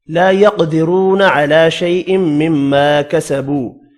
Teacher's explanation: لا يقدرون على شيء مما كسبوا, لا الف مدہ ہے, رو واو مدہ ہے, دونوں کو ایک ایک الف کی مقدار میں کھینچ کر پڑھیں گے. قاف ساکن ہے, قلقلہ بھی کرنا ہے, حروف مستعلیہ ہے, پر بھی پڑھیں گے